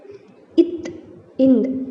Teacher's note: இத், இந்த் ஆகிய 2 மெய்களும் மேல்வாய் பல்லின் அடியை நாக்கின் நுனி பொருந்துவதால் பிறக்கின்றன